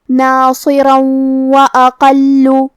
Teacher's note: کلمت واقل واو حروف الادغام بغنہ میں سے ہے اور ادغام کا معنی ہے حرف کو حرف میں داخل کرنا، تو ہم یہ تنوین کو واو میں ملا کے غنہ اور تشدید کے ساتھ یہ حکم کو ادا کریں گے